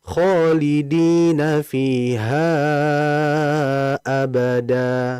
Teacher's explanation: Jadi jangan di jangan dihentak di ujung. Kalau dihentak di ujung itu seakan-akan ada hamzah. Sedangkan mad itu dia itu harus dibaca ya mutus aja. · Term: mad asli